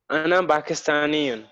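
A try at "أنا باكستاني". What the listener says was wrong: Ahlan wa sahlan. Very good.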